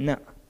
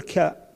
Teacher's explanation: لما نقول نا النا مشترك ما مشترك بس لما نقول كا ما هو مشترك ما بين الفم وما بين الانف